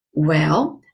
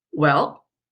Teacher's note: So when I say well, it's a third tone in Chinese. It's going down and up.